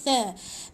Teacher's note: Hujung lidah di antara gigi